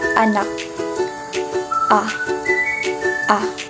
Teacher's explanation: Ito ay pababa at pasentral. Ito ay ang pinakabukas na tunog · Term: patinig na A